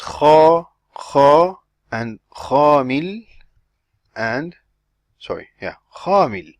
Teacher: When you put an alif after the kha, the same tongue characteristic remains while you're pronouncing the alif. You don't put your tongue back to the resting position.